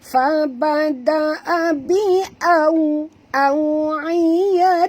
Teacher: Okay, waw ni sifatnya lin. Jadi bila kita sebut waw ini mati, maka kita kena muncungkan mulut kita ya